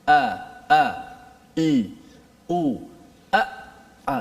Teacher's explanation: Hamzah di mana? Di pangkal leher kita.